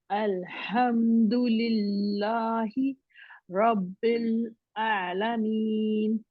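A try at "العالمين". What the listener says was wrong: थोड़ा सा आप ना उसको ठीक करते हुए, बल्कि हमजा की तरफ ज्यादा जा रही हैं आइन को। आलमीन, आलमीन, आला। अपना मुंह भी खोलेंगे ना, मुंह खोलेंगे और स्माइली बनाएंगे, थोड़ा सा जबड़े ना,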